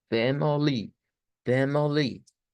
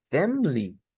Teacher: nótese cómo cuando aparece el schwa en medio hay una tercera sílaba y la palabra es más larga